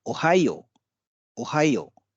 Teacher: ओहायो के बाद एक अतिरिक्त ओ है, तो इससे जो यो का जो साउंड है, यो की जो ध्वनि है वो थोड़ी सी लंबी हो जाएगी